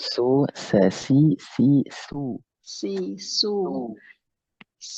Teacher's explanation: E sinnya terlalu tebal.